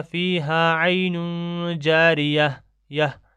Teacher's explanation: گول تا پر وقف کرنا ہو تو وہ ہائے ساکن بن جاتی ہے